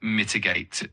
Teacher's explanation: for mitigate, it's mitigate with the emphasis on the first syllable.